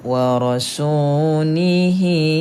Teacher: Waw tak berbaris, maka jumpa dengan mad asli panjang 2 harakat.